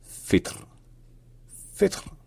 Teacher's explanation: dans ce contexte-là, le I peut souvent se rapprocher d'un E